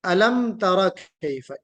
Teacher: علم تر کیف میں میم پر غنہ نہیں ہونا چاہیے، میم پر اظہار ہے، میم ساکن ہے، میم ساکن کے بعد تا حرف اظہار ہے، میم ساکن کے قاعدے کے تحت اظہار ہوگا۔